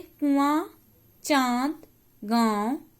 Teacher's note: हवा नाक और मुंह दोनों से निकलती है। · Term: अनुनासिक